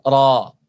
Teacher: bunyi A-nya jadi ikut tebal.